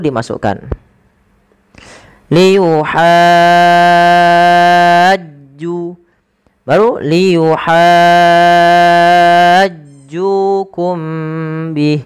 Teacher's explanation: Ju panjangkan 2 harakat karena ia mad tabi'i.